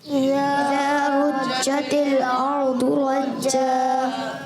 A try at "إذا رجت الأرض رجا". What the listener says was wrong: آپ کی آواز میں چھ جیسی آواز زیادہ آ رہی ہے، تھوڑا بچانا ہے اس سے.